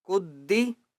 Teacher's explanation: کاف کو دال کے ساتھ ملائیں گے الف اور لام کو نہیں پڑھیں گے